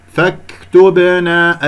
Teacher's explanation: الباء مقلقلة قلقلة صورة في وسط الكلام، ولا تسحب ضمة التاء قبل الباء إلى الباء الساكنة